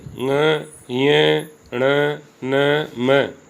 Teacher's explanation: इनका उच्चारण नासिका के साथ क्रमशः कंठ, तालु, मूर्धा, दांत तथा ओष्ठ के स्पर्श से होता है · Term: नासिक के व्यंजन